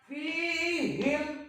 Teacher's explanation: bacanya diidharkan huruf mimnya, jangan didengungkan. Fihim tapi tidak bernapas. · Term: idhar safawi